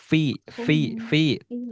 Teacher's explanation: huruf fa itu keluar dari bibir bawah bertemu dengan gigi seri atas